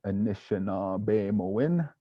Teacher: we got a short a short I another short I a long a along e short o and a short I so building feet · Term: short and long vowels